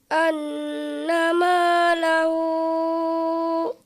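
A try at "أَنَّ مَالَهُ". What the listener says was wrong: Ini panjangnya harus diperhatikan. Di situ kalau di dalam tasydid dikatakan 2 ayunan, padahal itu adalah 5 harokat.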